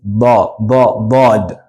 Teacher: Bod comes from the sides of your tongue. The sides of your tongue touch your upper molars.